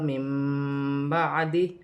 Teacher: نون ساکن کی آواز کو میم سے بدل کر غنے کے ساتھ ادا کیا جائے گا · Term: اقلاب